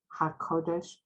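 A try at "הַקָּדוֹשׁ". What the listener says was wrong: So the third to the last word, hakadosh. I'm not sure if you said the dosh. Hakadosh.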